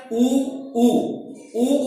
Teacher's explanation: ऊ बोलते वक्त हमारे होठ गोल हो रहे हैं और हवा का दबाव पीछे जा रहा है, आगे नहीं आ रहा, पीछे जा रहा है, ठीक है।